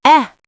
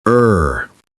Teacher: Bed is short, quick eh. But, bird is longer, er. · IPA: /e/ vs /ɜː/